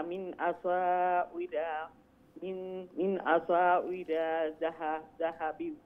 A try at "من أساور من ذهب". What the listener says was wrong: মিন আসাউরা মিন জাহাবিন দুইটা মিন আছে মিন আসাউরা মিন জাহাবিন